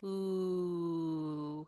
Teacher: when we say the u vowel our lips go round and close together · our tongue is high and back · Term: ooh vowel